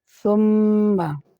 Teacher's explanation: সুম্ম বলার পরে নাকের মধ্যে গুনগুন আওয়াজ কিছুক্ষণ ধরে রাখলাম এটাকে বলা হয় গুন্না সুম্মা যদি বলা হয় সুম্মা তাহলে ভুল কারণ গুন্না হলো না